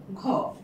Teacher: ঘ এর সাথে মানে হ টাইপের একটা নিঃশ্বাস ধ্বনি বের হয়ে এল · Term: মহাপ্রাণ বর্ণ